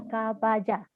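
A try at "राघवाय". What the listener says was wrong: Vaja? What is Vaja? Then? Not Ja, Ya. Raghavaya. So it's Raghavaya.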